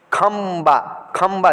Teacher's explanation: आधा एम की भी आवाज़ निकलती है